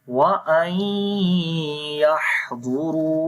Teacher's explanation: And you will make idgham with ghunna as the noon sakin is coming here, and after the noon sakin the next letter is ya. So we make idgham with ghunna, right? So noon and ya both letters sound will come.